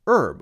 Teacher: Americans say herb we cut out the H sound